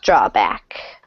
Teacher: pretty equal stress because this is kind of a compound word so drawback not break and one more time drawback draw a